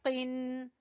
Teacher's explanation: जबान की जड़ से कौफ अदा होगा